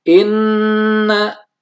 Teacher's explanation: jadi ada Nun bertasydid Inna jadi harus ditahan kurang lebih dua harokat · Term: dengung